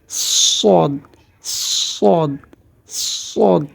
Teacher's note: সদ উচ্চারণ করার সময় আমাদের মাড়ির দাঁতের সাথে আমাদের জিহ্বার দুই পাশে যে কোনো এক পাশ লাগিয়ে দিলেই আমাদের উচ্চারণটা হয়ে যাবে